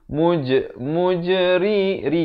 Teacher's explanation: Jangan baca ri itu tebal. Di sini kita baca nipis.